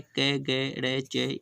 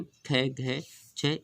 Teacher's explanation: अलप का अर्थ होता है कम, प्राण का अर्थ है वायु, जिनको बोलते समय कम वायु निकले, अलप प्राण। महाप्राण, महा का अर्थ है ज़्यादा, प्राण का अर्थ वायु, जिनको बोलते समय ज़्यादा वायु निकले उसे महाप्राण कहते हैं।